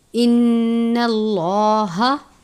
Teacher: لفظ اللہ کے لام سے پہلے زبر ہے، لام کو پر پڑھیں گے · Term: تفخیم